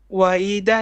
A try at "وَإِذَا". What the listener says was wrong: وإذا, make your wait, make your ذال clear. وإذا, ذال.